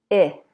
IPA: I